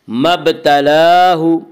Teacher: مبتلاہ، لام کے اوپر کھڑا زبر ہے، کھڑا زبر کو 1 الف کے برابر کھینچ کر پڑھیں گے۔